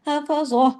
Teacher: ہا کی آواز آپ کے گلے میں آنی چاہیے